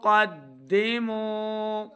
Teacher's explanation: ہے قاف حروف مستعلیہ سے ہے قدموا میم واو پیش مو واو ساکن سے پہلے پیش ہو تو واو مدہ یعنی اس کو 2 حرکات ہم نے لمبا کر کے پڑھنا ہے